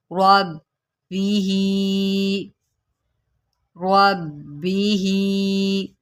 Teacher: با کے اوپر جماؤ کریں اور را کو موٹا کریں